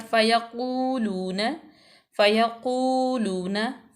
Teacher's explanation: उसके बाद क़ू काफ पेश वाव क़ू वाव मद्दा मा कबल मज़मूम तो वाव मद्दा हो जाएगी, वाव साकिन मा कबल मज़मूम तो वाव मद्दा, इसको लंबा करेंगे